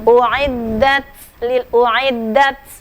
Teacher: apabila dia sukun dia harus hamas ya, ada hamasnya, ada uiddat sedikit.